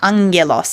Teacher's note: hard G is like G like the G in golf but if you have two Gammas together the first one gets nasalized